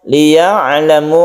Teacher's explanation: ainnya kita baca dengan lemas, tawassut, tengah-tengah, tidak terlalu ditekan dan tidak terlalu dilepas, itu sifat dari ain.